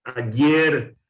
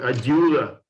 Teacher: la fricativa palatal sonora del Paraguay